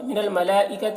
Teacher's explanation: یہاں پر مد متصل ہے، 3-4 الف کے برابر کھینچ کر پڑھیں گے.